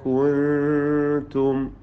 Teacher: കുൻതും സാക്കിന നൂനിനെ ഇഖ്ഫാ ഹഖീഖി നൽകി മറച്ചു മണിച്ചു കൊണ്ടുവന്നണം